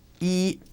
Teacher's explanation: number 1 is a first or high-level tone, yi. Or if we say a number like 41, 41, yi keeps its high-level tone.